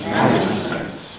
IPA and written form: ˈmænɪʤmənt (management)